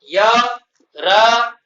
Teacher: र का उच्चारण मूर्धा से होता है इसलिए मूर्धन्य वर्ण कहलाता है। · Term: तालव्य वर्ण